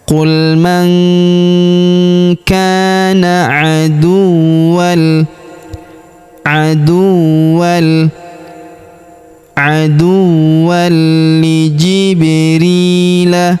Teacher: tanwin annya menghilang karena melebur ke huruf li yang berharakat tasydid